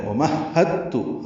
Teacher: کی وجہ یہ ہے کہ اس سے پہلے دال ساکن ہے، دال اور تا کا ایک ہی مخرج ہے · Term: ادغام متجانسین